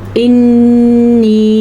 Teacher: नून के ऊपर शद आ गई है तो हम नून शद का गुन्ना ज़रूर अदा करेंगे